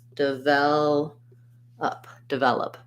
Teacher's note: i'm stressing on the vel syllable and that's where my clear vowel is devel and then again last syllable is unstressed so we don't · And then again, last syllable is unstressed. So we don't say an O sound for the letter O. We say the sound like a schwa. So I would write it like this: develop, develop.